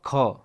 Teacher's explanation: ख जो है आपका दूसरे नंबर पर आता है तो ये महाप्राण होगा, ठीक है, जिसमें अधिक हवा निकले